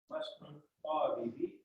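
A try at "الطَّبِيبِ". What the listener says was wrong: To panjang. Mana to panjang?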